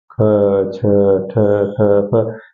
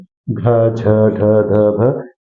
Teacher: ज्यादा मात्रा में वायु बाहर निकल रही है तो इसे महाप्राण कहते हैं